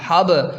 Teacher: حابا زبر حب، با ساکن ہے تو قلقلہ بھی ہوگا